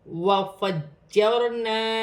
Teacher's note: را ساکن ہے، را ساکن سے پہلے زبر ہے تو را موٹی پڑی جائے گی